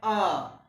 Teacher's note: मध्य भाग में जीभ के मध्य भाग से आ का उच्चारण होता है